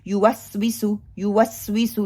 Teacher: सीन में सफीर भी पाया जाता है, सीटी विसली आवाज आती है, ठीक है। युवस्विसु, युवस्विसु नहीं मैं करूंगी, सीन के ऊपर कलकला भी नहीं करूंगी, शिद्दा भी नहीं करूंगी, बल्कि उसको पकड़ के कमजोरी की वजह से साउंड को लेके चलूंगी।